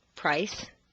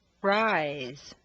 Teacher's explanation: both voiced and unvoiced diphthongs have the underlying structure of the tone shift or the double stair step but the shift is much larger for the voiced ones